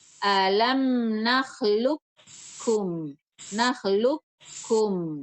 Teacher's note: Yang kedua, al-qafu fil kafi, huruf qaf bertemu dengan huruf kaf. Qaf dari pangkal lidah atas, kaf dari pangkal lidah bawah.